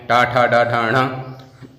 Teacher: ऐसे णा का आपने टा, ठा, डा, ढा, णा, मूर्धा पढ़ा, तो मूर्धा भी है और नासिका भी है।